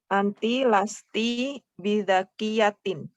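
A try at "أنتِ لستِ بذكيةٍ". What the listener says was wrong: Ahsanti.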